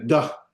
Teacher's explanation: So you're taking a dalet, instead of making a th sound, you're making a duh really hard. Now that's kind of a nuance, it's a little hard to sometimes recognize, and that's the case in many of those, but there is a subtle difference. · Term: hard D sound